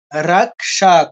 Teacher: ক আগে মূর্ধন স পরে উচ্চারণ করার সময় ক দিয়ে ধরবো মূর্ধন্য স দিয়ে ছাড়বো